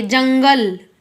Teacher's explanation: अनुस्वार का उच्चारण करते समय सिर्फ क्या होता है? इसका उच्चारण नाक से करते हैं हम। जैसे देखिए जंगल, नाक से आप करके भी देख लीजिएगा तो नाक से होगा इसका उच्चारण।